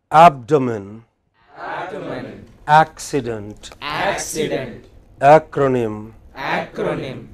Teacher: All of these words have main stress on the pre-final syllable, third syllable from the from the end, right?